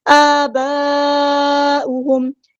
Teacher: مد متصل, کنیکٹڈ مد ہے, اسی کلمے میں مد ہے, اسی کلمے میں حمزہ ہے, ہم نے اس کو 4 یا 5 کا لمبا کرنا ہے